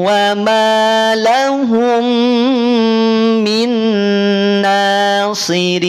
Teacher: disertakan dengan dengan kadar gunah yang sempurna sehingga ketika kita tutup hidung kita akan terhenti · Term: Idam BG Kamil